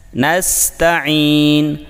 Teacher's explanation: نستعین میں سین ساکن میں سیٹی کی آواز واضح کریں، یعنی نستعین، اور عین کو حلق سے نکال کر یا کو لمبا کریں، یعنی نستعین نستعین۔